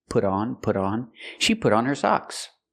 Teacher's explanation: We hear the T in put change to a fast D.